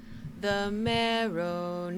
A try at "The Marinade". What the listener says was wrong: There's no O in Marinade. Let's try it one more time. Marinade. The Marinade.